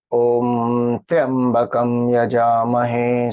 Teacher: ya goes up because there's one line above, that is Udatta